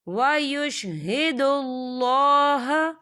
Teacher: یہاں پر اللہ کا نام موٹا پڑھا جائے گا کیونکہ اللہ کے نام سے پہلے پیش ہے تو ہم اسے پر پڑھیں گے۔